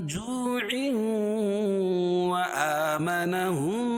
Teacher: کھڑا زبر قائم مقام الف مدہ کی، اس کو ایک الف کے برابر کھینچ کے پڑھیں گے. آمنہم، میم ساکن کے بعد میم آئے تو ادغام شفوی ہوتا ہے.